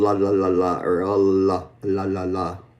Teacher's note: L is what we call an alveer lateral where the air is actually it's voiced but the air is going around the tongue as in la or la right.